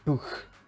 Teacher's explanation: It is a simple velar fricative